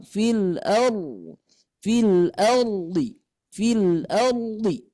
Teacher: kalau huruf ra ini menyimpangnya ke belakang. Jadi lidah kita ditarik ke belakang. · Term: inhiraf